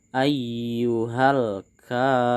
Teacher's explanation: huruf K panjang di sini disebut dengan mad tabi'i. Kita harus membacanya panjang 2 harokat.